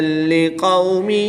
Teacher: قاف حروف مستعلیہ میں سے ہے تو اس کو پر یعنی موٹا پڑھیں گے